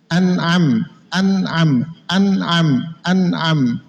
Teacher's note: Hamzah itu mahrojnya aqsal halq bersama dengan ha.